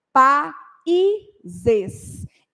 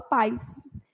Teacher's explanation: esse I aqui ele é uma semivogal ele não pode ficar sozinho numa sílaba